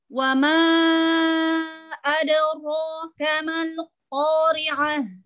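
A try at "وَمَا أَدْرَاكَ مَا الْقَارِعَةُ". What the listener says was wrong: Ya, ini Ahsan, enggak ada monyong-monyong.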